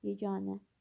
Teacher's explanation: Səs uzanması yeganə. Yeganə sözünə uzanma ikinci hecadadır, yəni A saitindədir. Vurğu isə sondadır, yeganə. Bir düzdür.